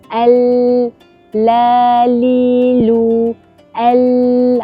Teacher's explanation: Jadi dia keluar melalui kiri dan kanan lidah. Itulah sifat al-inhiraf yang [muzik] ada pada huruf lam.